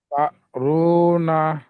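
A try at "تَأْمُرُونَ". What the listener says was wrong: মুরু না। রু না নয়, মুরু না।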